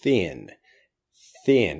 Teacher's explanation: you try to over pronounce it it becomes easier to say all you have to do is stick out your tongue and then bite your tongue and then just pass air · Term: th sound